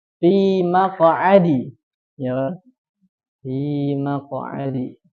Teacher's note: jadi huruf th dan qo dipantulkannya lebih jauh lebih tebal ya jauh lebih tebal daripada yang istifal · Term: istila